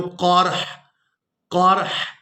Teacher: वक़फ़ की सूरत में हा को साकिन कर देंगे, क़ाफ को रा साकिन और हा साकिन के साथ मिलाकर अदा करेंगे।